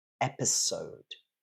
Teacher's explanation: stress is on the first syllable and it's a s in front of the ode.